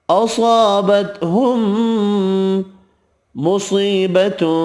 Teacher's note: میم مشدد پر غنہ ہوگا، صاد حروف مستعلیہ پر پڑھیں گے، یا مدہ ایک الف کی مقدار میں کھینچ کر پڑھیں گے، تنوین کا اخفا ہوگا۔